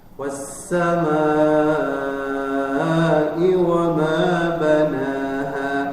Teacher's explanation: Di situ ada mad wajib muttasil, yaitu wajib dibaca 5, ya. Ada bacaan mad asli atau tabi'i bertemu hamzah dalam satu kata, maka itu panjang 5 harokat atau mad wajib muttasil.